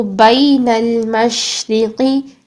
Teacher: شین میں یہ پھیلی ہوئی ساؤنڈ آنی چاہیے. بین اب یہاں پر لام کو ہلائیں گے نہیں.